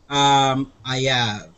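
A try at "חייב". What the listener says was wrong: Ayav with an H.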